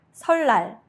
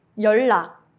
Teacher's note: When 니은 받침 meets 리을 or 리을 받침 meets 니은, both become a clear 리을 sound.